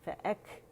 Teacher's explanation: اچھا پھر ہے فَأَكْثَرُوا، فَأَك میں کیا ہے ہمس ہے، فَأَك فا بھی باریک، حمزہ بھی، کیف بھی